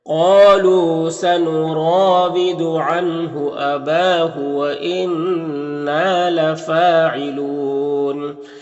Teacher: قاف حروف مستعلیہ میں سے پر پڑھیں گے